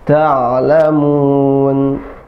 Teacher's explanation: Ain suaranya pertengahan, ya, bukan menekan banget, misalnya, atau tertahan.